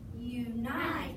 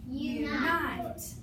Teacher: accent's on the second syllable, so we're going to unaccent the first syllable.